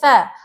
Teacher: Ujung lidah bertemu dengan gigi depan yang atas